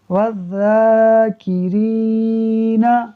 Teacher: یہاں پر واو ڈائریکٹ ذال سے ملے گا، الف اور لام پڑھنے میں نہیں آئے گا، اور یہاں پر را کو اس وجہ سے کھینچا ہے کیونکہ یہاں پر یا مدہ ہو رہا ہے